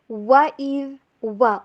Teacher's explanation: واؤ کے اوپر ہونٹوں کو گول کیجئے اور اس کو ادا کیجئے ڈبلیو والی ساؤنڈ کے اوپر